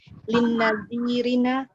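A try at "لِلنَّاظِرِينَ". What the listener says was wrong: Bacanya kalau linnadzirina ya dibaca mati ujungnya. Walaqad ja'alna fis sama'i zayyanaha linnadhirin wa hafidnaha min kulli syaitonir rajim.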